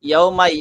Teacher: এরপরে ইয়াউমাই, এখানে যে মা ই দুইটা হরফ, দুইটা একটার মধ্যে আরেকটা মিক্স হয়ে যাচ্ছে, যার কারণে হামজাটা স্পষ্ট হচ্ছে না